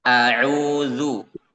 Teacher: Huruf ain kita baca dengan menunaikan haknya ya. Huruf ain itu kan keluar dari tenggorokan tengah